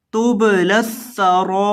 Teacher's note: را کو 3 سے 4 الف کے برابر لمبا کر کے پڑھنا ہے کیونکہ اس کے اوپر مد لازم ہے، مد متصل ہے، اس کی وجہ سے اس کو 3 سے 4 الف کے برابر مد کریں گے۔